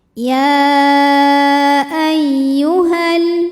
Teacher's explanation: Namun dibaca panjangnya hanya saat berhenti saja. Karena kalau wasal, panjangnya ini gugur, madnya gugur. Ha-nya dibaca pendek. Kenapa? Karena ada pertemuan dua huruf sukun.